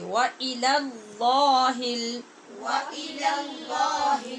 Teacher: پہلے لام کو باریک کیجئے، دوسرے کو پر کیجئے